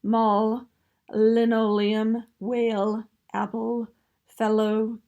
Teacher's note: the air is coming out of the mouth and it is flowing off of the sides of the tongue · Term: lateral airflow